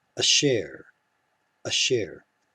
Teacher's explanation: we get a reduced vowel under the aleph that works as a cluster with the sheen